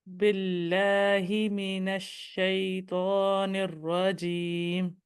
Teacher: میم آپ نے بالکل ہونٹوں کو ملا کے میم کہنا ہے، پوری قوت کے اچھا، ساتھ کہنا ہے۔ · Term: شفوی لیٹر